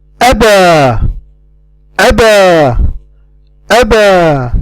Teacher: The alif here is at the end of the word. And because it's at the end of the word, we do not cut the sound of an alif with closing the vocal cords, forming the sound of a hamza.